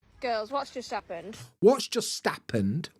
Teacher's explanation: dropping the H at the front of words is very common in a lot of northern accents